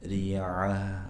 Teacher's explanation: ta marbutah yang disukunkan maka bunyinya bunyi ha